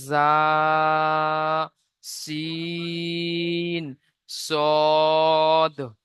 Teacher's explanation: যে 13 নম্বর মাখরাজ, জিভের আগা এবং সামনের উপরের এবং নিচের দুই দাঁতের আগার সাথে লাগিয়ে উচ্চারিত হয়